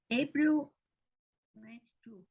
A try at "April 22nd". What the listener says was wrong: Yes, and the pronunciation is April 22nd. That's why we have ND, because it is second, 22nd.